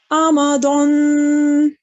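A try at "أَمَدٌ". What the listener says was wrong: जी दाल को मोटा नहीं करते, दाल को हम मुंह खोल के पढ़ते हैं, ठीक है. ये मुफख्खम नहीं है, मुरक्कक हर्फ है, यानी खोल के मुंह खोल के पढ़ा जाता है, ठीक है.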